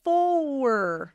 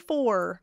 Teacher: I'm going to stick an extra little schwa there, and it happens before an L, and it happens before an R sometimes. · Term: sneaky schwa